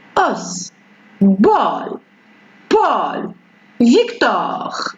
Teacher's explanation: On a ici le O, mais elle est un peu ouverte.